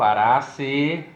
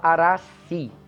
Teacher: a gente pode dar uma esticadinha nesse E final